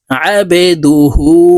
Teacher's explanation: বা জবর আবে দাল পেশ দু আবেদু হা উল্টা পেশ হু হার উপরে উল্টা পেশ আছে তাই এই হাকে এক আলিফ টেনে পড়বো আবেদুহু ঠোঁট গোল করে এক আলিফ টেনে পড়তে হবে আবেদুহু ওয়া